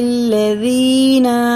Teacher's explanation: یا ساکن سے پہلے زیر ہیں تو اسے کھڑی زیر کی طرح کھینچ کے پڑھیں گے، اور یہ الف چھوڑ دیں گے، یہ خالی ہے۔